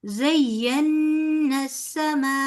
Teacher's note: जई को लंबा नहीं करना, नून का गुन्ना बुलाना है।